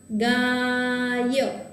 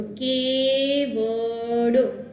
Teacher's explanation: સ્વર પછી ય અને વ આવતા હોય તો ઉચ્ચારણ છે એ સ્વર જેવું થશે. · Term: ઉચ્ચારણ સ્વર જેવું